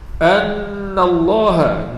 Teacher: nun yang bersabdu, ini wajib al-ghunah, wajib dengung 2 harakat.